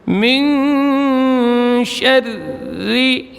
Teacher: tipis ra-nya karena kasrah